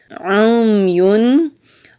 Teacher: عین حلق سے نکالیں گے، پہلے عین کی آواز پھر حرکت کی آواز، یعنی کہ پہلے حرف کی پھر پیش کی، اور اس کے بعد یا ہے، یا کے اوپر تنوین ہے، آگے فا آ رہا ہے، تو جب بھی تنوین اور نون ساکن کے بعد 15 حروف ایسے ہیں جب وہ آتے ہیں تو وہاں ہم اخفا کرتے ہیں۔